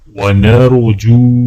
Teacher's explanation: جیم کو واو کے ساتھ ملاتے وقت ایک الف کے برابر کھینچیں گے